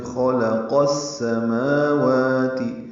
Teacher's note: خلق یہ پڑھیں گے، قاف کو السماوات کی سین سے ملا دیں گے تو خلق السماوات. ادغام شمسی ہے جو قاف سین سے ملا رہے ہیں، الف لام نہیں پڑھا جا رہا